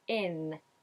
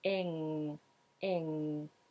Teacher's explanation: is doing an IN ending, meaning he's using the tip of the tongue high up on the alveolar ridge, closing it at the front, in, whereas I use the back of the tongue high, closing it off at the back